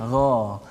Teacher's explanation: dia tak guna hujung lidah, dia guna belakang dekat dengan ghin lah